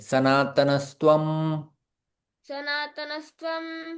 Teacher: त्वं यहाँ पर पहली संधि हम लोग देखते हैं, विसर्ग यहाँ पर स में परिवर्तन होता है।